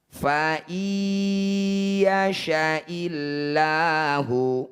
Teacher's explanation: nun sukun bertemu ya disebut bacaan Idam bunah Idam artinya masuk Bunyi Nun langsung masuk ke ya Jadi tidak berbunyi in lagi tapi bunyinya faai masuk ke sini dengungkan dua harakat tahan dua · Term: idgham bi gunnah